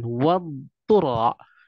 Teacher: Ini adalah sebuah penegasan bagaimana cara pengucapan antara dhad yang di dalamnya adalah huruf istitalah yang dijelaskan di bait pertama tadi berkaitan memanjangnya huruf dhad, memanjangnya huruf dhad karena ada sifat istitalah dan bertemu dengan ta, jangan sampai diidghamkan